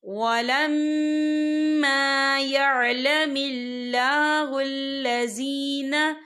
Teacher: یہاں میم مشدد ہے تو یہاں پر غنہ ہوگا، اور یہاں پر الف مدہ بھی ہو رہا ہے تو ہم یہاں 2 یا 3 حرکت کے برابر کھینچیں گے۔ · یہاں پر اللہ کا نام باریک پڑھا جائے گا کیونکہ اللہ کے نام سے پہلے زیر ہے